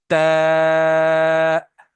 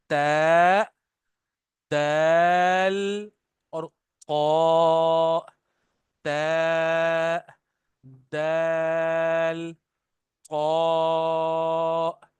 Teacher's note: tip of द tongue touches द back side of द upper teeth